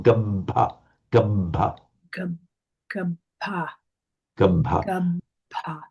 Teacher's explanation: For example, gabba. It's a heavy syllable because it's got a doubled consonant. So it's a short vowel, but the length, the additional length is given by the holding of that consonant.